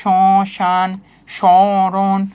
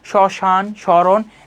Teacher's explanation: তোমার নাক থেকে আওয়াজটা তৈরি হচ্ছে। এরকম মনে হচ্ছে। সামান্য নাসিক্য স্বর হচ্ছে।